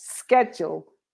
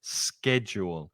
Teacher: the Americans have that hard k, that k, that k sound